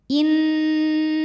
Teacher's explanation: cara membacanya didengungkan bunyi n tahan sampai ada suara masuk hidung kurang lebih dua harakat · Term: gunah musyaddadah